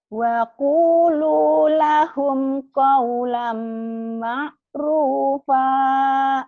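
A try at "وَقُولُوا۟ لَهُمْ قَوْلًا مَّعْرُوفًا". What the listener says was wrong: Ma'ruf kan panjang. Ma'rufa.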